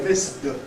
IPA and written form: mɪsd (missed)